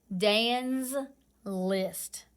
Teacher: That S is vibrating because the N vibrates. The letter before it vibrates. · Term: Z sound